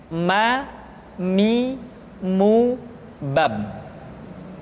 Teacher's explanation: huruf ma diucapkan dengan cara merapatkan dua bibir